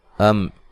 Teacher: یہاں میم ساکن کا اظہار ہے، غنہ نہیں کریں گے